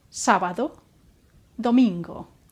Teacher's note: In the days sábado, Saturday, and domingo, Sunday, remember not to add a short U sound after the final O